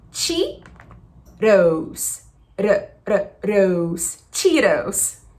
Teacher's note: esse T aqui tem um segredinho do inglês americano, que eles chamam de flap T, que a gente vai fazer como se a gente fosse pronunciar a palavra arara.